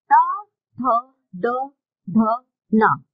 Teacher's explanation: ता वर्ग के वर्णों का उच्चारण करते समय आपकी जीभ दांतों से स्पर्श करेगी